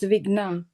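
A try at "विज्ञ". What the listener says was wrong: Not Ga. It's not Ga. It is Jna. Vijna. Vijna.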